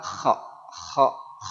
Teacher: q dan huruf Kaf tempat keluar dia di mana pangkal lidah lidah bagian paling belakang ya mendekati tenggorokan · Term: huruf q